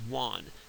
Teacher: he's also deleted the stop in want. He says "wan," and that's something that English speakers do all over the place. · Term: deletion